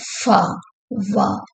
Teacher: lower லிப்பும் அப்பர் டீத்தும் ரெண்டுக்கும் இடையில ஒரு உராய்வு ஏற்படும் சோ தே கிரியேட் எ நேரோ பேசேஜ் பார் தி ஏர் ஃப்ளோ ரெண்டும்